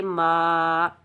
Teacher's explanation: मीम के ऊपर खड़ा ज़बर 1 अलिफ की मिकदार खींच कर अदा करेंगे